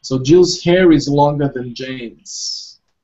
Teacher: we have to pronounce the sound R, even in British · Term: liaison